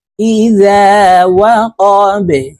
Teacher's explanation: বা কলকলার হরফ নিচের দিকে ধাবিত করে ধাক্কা দিয়ে উচ্চারণ করব